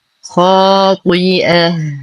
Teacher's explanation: والألف مفخمة بأعلى درجات التفخيم لأنها تتبع الخاء